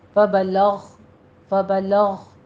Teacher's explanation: غین کو ادنا حلق سے ادا کرنا ہے، اس کو پر پڑھیے، حروف مستعلیہ میں سے ہے، فبلغ فبلغ۔